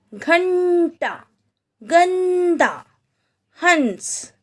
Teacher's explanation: इन शब्दों में आधे न की आवाज आ रही है, यानी कि ये जो बिंदु है इसमें अंग की आवाज नहीं आ रही है, बल्कि आधे न की आवाज आ रही है।